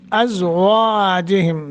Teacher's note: زا اور واو کو موٹا کرنا ہے